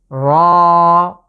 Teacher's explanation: র, বাংলার যে র আছে অনেকটা এমন, তবে খেয়াল করতে হবে এটা আমরা একটু মোটা করে উচ্চারণের চেষ্টা করব। এর মাখরাজ হচ্ছে জিভের আগাটা, জিভের আগার যে পিঠ আছে সেটাকে আমরা ঠিক তার উপরের তালুর সাথে লাগিয়ে উচ্চারণ করতে হবে। র। র, এটাকে 1 আলিফ টেনে পড়ব।